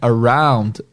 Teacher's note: Mas o som da palavra é around. Esse som mais relaxado é o que eles chamam de schwa sound.